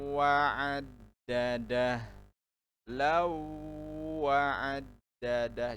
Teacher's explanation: Jadi dimasukkan ke huruf setelahnya huruf wawunya didengungkan.